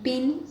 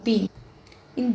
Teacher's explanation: difference between these two sound is of vibration in vocal cords